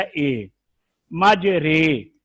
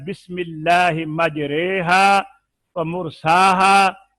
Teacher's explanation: الف کو یا کی طرف، زبر کو زیر کی طرف مائل کرنا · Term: امالہ